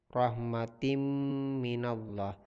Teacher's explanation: Karena kasrah tain bertemu dengan huruf min. Jadi cara membacanya dengan dengun. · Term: idgham bigunnah